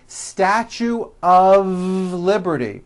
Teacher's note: notice how I connected the word of with the word Liberty · I call the of exception many foreign speakers make this mistake even though the word of is spelled with an F we pronounce the word of with a voiced v